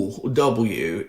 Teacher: woo is fundamentally just an oo a vowel with rounding a little. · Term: woo sound